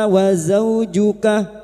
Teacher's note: wau fathah bertemu wau sukun kita lunakkan huruf lin.